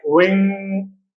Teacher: if at the end we have Ng n is pronounced but g is silent